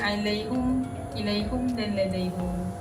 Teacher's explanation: Bagi keadaan yang melibatkan ketiga-tiga perkataan ni, Imam Hamzah akan wakafkannya dengan mendhamahkan ha. Apabila wakaf, dia akan berbunyi alaihum, ilaihum dan ladaihum.